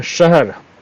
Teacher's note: तो जीभ मुड़ कर के तालू में टच करता है दांत के ऊपर